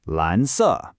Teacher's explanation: A rising second tone followed by a falling fourth tone.